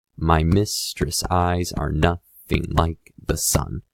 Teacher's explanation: iambic pentameter which is five pairs of unstressed followed by stressed syllables